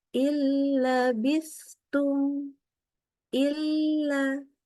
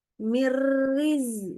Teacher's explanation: Jadi nunnya langsung lebur ke huruf lam dan ke ro-nya bila gunnah. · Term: idgham bila guna